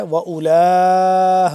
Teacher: اس کو ہم کریں گے لام یہ لام کھڑا مد زبر لا 4 سے 5 الف کے برابر یہ لمبا ہوگا بڑی مد ہے.